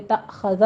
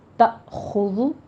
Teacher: خو کو پور پڑھتے ہوئے تأخذہ نہیں ہے، تأخذو ہے، ہونٹ گول کیجیے زما کی ادائیگی پر۔ تأخذو، خو کو پور بھی پڑھنا ہے، حروف مستعلیہ میں سے ہے۔